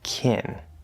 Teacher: Note that can often reduces to the second vowel sound kin, can't. Note that both can and can't can have a little bit of a y sound between the K and the A vowel, but that is not necessary.